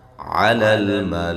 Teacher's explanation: لام کو لام کے ساتھ ملانا ہے. قلقلہ نہیں کرنا. ہلانا نہیں ہے اس کو.